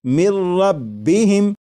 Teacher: لکھا ہوا ہے من، لیکن جب نون ساکن کو را میں ملا کر پڑھیں گے تو پھر نون ساکن کی آواز نہیں آئے گی، بلکہ میم کے بعد را کی آواز آئے گی، اور یہاں پر غنہ نہیں کریں گے اور اسے پڑھیں گے مر ربہم۔ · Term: ادغام